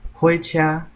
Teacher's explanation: 火车后壁用后壁加一个车，所以伊火就变火，第2调变第1调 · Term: 变调